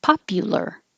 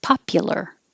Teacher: Hold the L so you can hear the L sound. This U in the middle can really sound like a U, popular, or it can change to a schwa because it's not stressed.